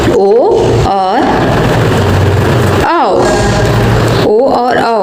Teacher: कंठ और ओष्ठ से बोलने वाले वर्ण है वो है ओ और औ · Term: कंठोष्ठो